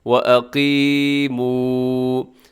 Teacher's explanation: اس میں قاف موٹا رکھیے گا اور آخر میں واو مدہ ہے، اسے لمبا کیجیے گا